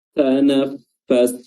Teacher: Nafas, ya huruf pa, ya ujung lidah bertemu dengan ujung lidah, ujung gigi atas bertemu dengan perut bibir bawah